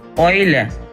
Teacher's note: In the combination EU, the sound of the U tends to be shortened.